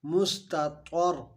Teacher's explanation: مس میں سین ساکن ہے، سین کے اوپر جزم ہے. تا باریک ہے اور طا موٹا ہے، حرف قلقلہ بھی ہے اور اخفا حروف مستعلیہ ہے، اس کو بھی موٹا پڑھیں گے.